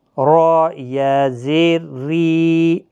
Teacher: اب را باریک ہوگا زیر کی وجہ سے